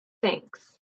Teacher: It's not thanks, which you might hear with Slavic learners. It's in between teeth. No vibration.